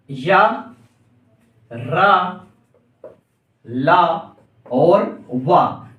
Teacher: अंदर से आपकी वायु निकलेगी इसके उच्चारण में, और किसी भी मुंह के भाग को स्पर्श किए बिना बाहर निकल जाएंगे। अब इसमें कौन कौन से रहते हैं आपके, तो इसके अंतर्गत आएंगे आपके या, रा, ला और वा। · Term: अंतःस्तर